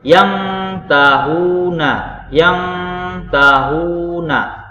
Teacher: Seakan-akan dia berdengung. Bunyi dari nunnya itu seakan-akan hilang. Itu yang artinya samar. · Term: ikhfa hakiki